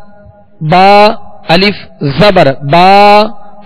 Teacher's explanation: ایک الف یعنی 2 حرکت کے برابر کھینچ کر پڑھیں گے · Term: الف مدہ